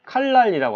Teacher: 일단 요 니은이 리을로 바뀌었죠. 유음이 아닌 니은이 유음인 리을로 바뀌었죠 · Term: 유음화